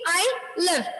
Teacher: I'm not stressing I, but I'm stressing on the sound live.